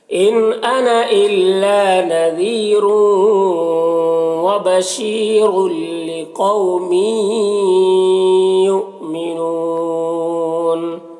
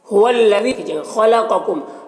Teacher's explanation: خا اور قاف دونوں حروف مستعلیہ میں سے پر پڑھیں گے